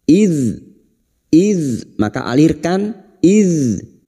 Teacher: huruf dzal memiliki sifat rokhawah, yaitu mengalirnya suara ketika membunyikan huruf karena lemahnya penekanan terhadap makhraj.